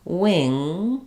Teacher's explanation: You can feel where your tongue goes. But when you say wing, you shouldn't feel your tongue lifting in the front at all. It only lifts in the back. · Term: NG sound